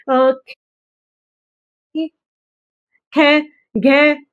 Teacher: वर्णों के उच्चारण में अधिक सांस बाहर निकलती है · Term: महाप्राण